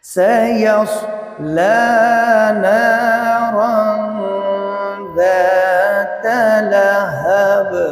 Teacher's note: یہاں را کے اوپر دو زبر تنوین ہے، تنوین کے بعد ذال حرف اخفا ہے، تو لہٰذا اس تنوین میں اخفا یعنی غنہ ہوگا